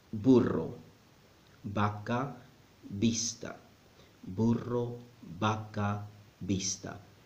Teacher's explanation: the B and the V sound exactly the same in Spanish.